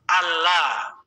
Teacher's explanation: Bukan anla. Tapi nunnya itu seolah-olah enggak ada tuh, dimasukin ke suara lam. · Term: idgham